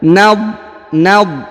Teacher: Huruf dha bukan huruf qalqalah atau bukan huruf pantul, jadi jangan dipantulkan, maka dibaca nadratan.